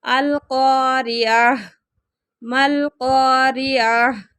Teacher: گول تا آ جائے تو وقف کی صورت میں ہاں میں بدل جاتی ہے